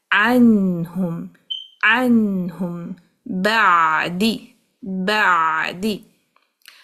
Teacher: आइन में हम्स नहीं होता, सांस नहीं होगी, बिना सांस के इसको कहना है, थोड़ा दबाना पड़ेगा इस जगह को आइन कहते हुए, अनहुम, अनहुम, बादी, बादी।